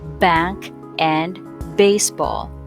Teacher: notice that your vocal cords vibrate as the sound of B is produced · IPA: [b]